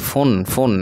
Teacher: তানবিনের পরে এই যে খা ইজহারের হরফ তাহলে এটাকে গুন্না করা যাবে না এই ফুন ফুন এভাবে পড়তে হবে ফুন এভাবে বলা যাবে না